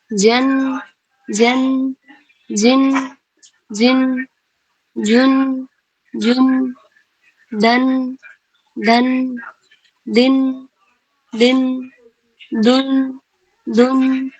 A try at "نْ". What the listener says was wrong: جی sisters آپ لوگ کیا کر رہی ہیں نا، مخرج سے فوراً ہٹ جا رہی ہیں، مخرج میں تھوڑی دیر کے لیے ٹھہر جائیں گی. اوکے جن رک جائیں گی، کہ آرام سے پڑھنا ہے، جلد بازی نہیں کرنی.